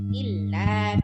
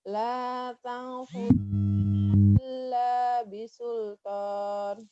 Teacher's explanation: Illa, lamnya kurang panjang dikit.